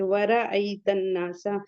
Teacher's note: وَرَأَيْتَ النَّاسَ، نون مشدد ہے اور یہاں پہ حروف شمسی کا قاعدہ ہوگا، الف لام دونوں نہیں پڑھیں گے۔ نون کے بعد کا الف مدہ ہے اور نون مشدد پہ غنہ بھی ہوگا۔